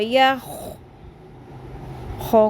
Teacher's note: یکاد البرق. یا زبر خو، یا خو کو پر کرنا ہے اور خراش کی آواز بھی آنی ہے